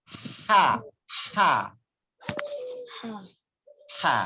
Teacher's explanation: Jangan diambil dari bawah, jangan diambil dari pangkal lidah, pangkal tenggorokan, tapi tengah-tengah dia tempatnya.